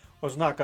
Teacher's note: наголос ознака другий склад